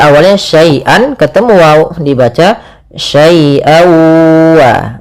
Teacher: Kemudian pada lafal an ketemu wa, nah ini sama sebagaimana hukum daripada nun mati ketemu dengan nun, yaitu suara tanwinnya masuk kepada huruf waw